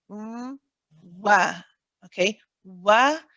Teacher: So this time what you're doing is you're saying, now wa, we know is a letter of the lips. So you have to round the lips, but then you have to go into that fatha position